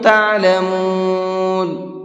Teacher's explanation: تعلمون کے اندر عین ہے، حمزہ نہیں ہے، اس لیے حلق سے نکال کر کے پڑھیں گے